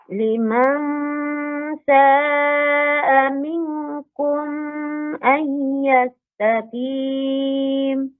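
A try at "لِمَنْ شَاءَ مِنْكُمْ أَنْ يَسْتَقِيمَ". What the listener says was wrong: Ya, kumnya dibaca pendek. Mingnya yang lama. Minkum ay yastaqim. Nah, jadi kalau Ibu mendengar kum ay, nah di sini minkum ay. Nah, di sini ada jeda Ibu. Ada memanjangkan kumnya. Kum seharusnya dia cepat saja Ibu. Kum, itu saja.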